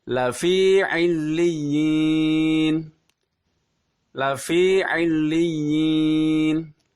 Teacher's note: harus terdengar murni huruf i tidak ada suara yang masuk ke hidung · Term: harokat kasroh